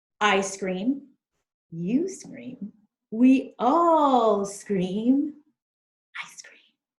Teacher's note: so that consonant sound s flies over to the s in cream to make scream